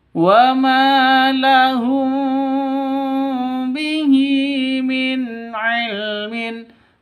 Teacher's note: mim mati bertemu dengan ba, samar didengungkan ya karena bacaan ikhfa safawi dengung. Mim mati bertemu dengan huruf ba.